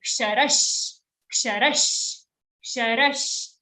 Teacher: We are joining the ra to the next sh sound. Ksharash. Then the sh is joined to a cha. · Again, kshama ka ksha, half ka joined to a sh, kshara. On ra we have an aghat. So we are putting extra force.